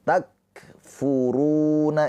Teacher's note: Ru ini dibaca panjang. Kenapa panjang? Karena ada pemanjangnya yaitu wau sukun